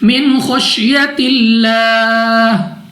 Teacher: ہاں کی آواز ہم نے واضح ادا کرنی ہے وقف کرتے وقت